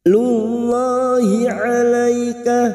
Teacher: Lam jalalah kita baca tafkim karena sebelumnya ada harokat dhammah.